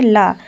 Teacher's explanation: बाहर निकलने वाली प्रशास वायु जीवा के अगल-बगल से निकलती है। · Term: पार्श्विक व्यंजन